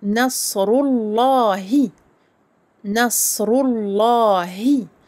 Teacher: Donc, on ne prononce pas ni le alif ni le lem. Pourquoi? Parce qu'après le lemme de l'article ici, alif lam, nous avons un lemme qui est solaire.